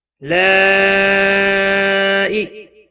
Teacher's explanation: بڑی مد ہے، مد متصل، 5 الف کے برابر کھینچ کر پڑھیں گے